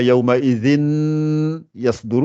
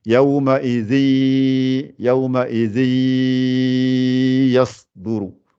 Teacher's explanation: on fait l'entrelacement tout de suite entre les deux mots. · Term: idgham